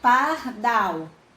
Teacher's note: E pardal também não tem acento, mas a gente fala pardal. No caso, dal é a sílaba mais forte. Então, dal é a última sílaba, então pardal é oxítona, marca em oxítona, tá certo?